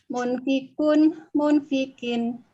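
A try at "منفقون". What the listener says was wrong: Dipanjangin, Bu, karena ada waw.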